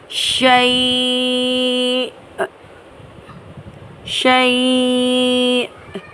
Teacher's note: حمزہ کو اینڈ میں جھٹکے سے ادا کرتے ہوئے ہم سانس توڑیں گے